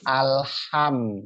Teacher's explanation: Ha itu bersih ya, suaranya bersih, pipih atau tipis, dan banyak hembusan angin yang keluar karena dia apa namanya mempunyai sifat hames.